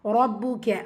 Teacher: ரா ஃபத்தா பேச்சு வந்திருக்கு, வல்லினமாக ஓதணும்